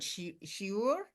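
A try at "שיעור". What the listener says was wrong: shir, yes, on a shir. It's not shiur in Hebrew. It's on a shir, without limits,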